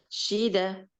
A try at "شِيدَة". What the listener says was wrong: So now you said shida. Shida. Da. It means there is alif after that. She, da, shida, like that.